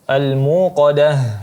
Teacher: ta marbutah terakhirnya dirubah menjadi ha dan dijelaskan.